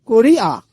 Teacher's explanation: যেমন করিয়া এর উচ্চারিত রূপ করিয়া এখানে আমরা দেখতে পেলাম যে অন্তস্থ অ এর উচ্চারণ স্বরধ্বনির মত শোনা যাচ্ছে